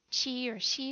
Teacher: the CH English sh or CH your tongue is farther back when you make the Chinese X or Q sound your tongue is actually almost or actually touching your front teeth and your tongue not only is it more forward it's higher